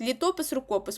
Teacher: все що закінчується на опис матиме наголос на опис